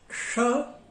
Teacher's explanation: स, संतोष, सकारात्मक, सहयोग। और श, जीभ तालु की ओर चली जाती है, ये तालव्य है